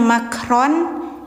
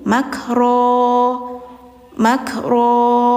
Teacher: maka jangan dimatiin hurufnya ya, tapi dipanjangkan berlaku hukum mad iwad. Jadi gantikan suara N ke panjang yang awalnya makron jadi makro makro gitu ya.